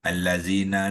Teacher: zal yang berbunyi zi tadi dipanjangkan oleh ya ni bunyi itu kepada dua harakat ya. Sebab dia aa membina hukum yang dipanggil hukum mad asli ya dalam bacaan wasal ya. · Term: ya mad